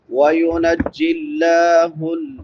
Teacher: لفظ اللہ باریک ہوگا کیونکہ لفظ اللہ سے پہلے زیر ہے